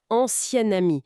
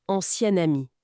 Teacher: ça se prononce presque comme au féminin avec un son N qui apparaît